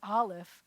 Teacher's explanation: your throat down and open it up to get to and you can't just say it without closing your throat down and opening it up first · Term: glottal stop